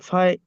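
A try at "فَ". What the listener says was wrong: ফাই নয়, ফা আইন জবর ফা, ফা আইনের উচ্চারণটা হলো, হ্যাঁ, ফা আইন জবর ফা, আইন জবর আ, ফা আ। ফা আ।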